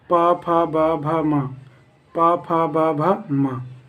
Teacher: इसका मतलब ये हुआ कि अगर आपको ओष्ठ पा फा बा भा बोलना पड़े तो ये सारे जितने वर्ण हैं ये आपके ओंठ को टच करेंगे। बिना ओंठ को टच किए हुए ये सारे वर्ण को आप नहीं बोल सकते हो।